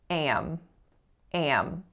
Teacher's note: that's how most speakers in North America will say that vowel with a little bit of nasality on that a sound.